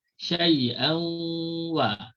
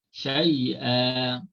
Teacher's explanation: Maka bila kita tukarkan tanwin kepada mad, tak bunyi dah tanwin, syai'an kepada syai'a. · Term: mad iwat